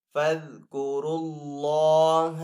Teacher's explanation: اللہ عز و جل کے نام کو یہاں پہ پر پڑھیں گے کیونکہ پہلے والے حرف کے اوپر پیش آ رہی ہے · را کو پر پڑھیں گے کیونکہ را کے اوپر یہاں پہ پیش ہے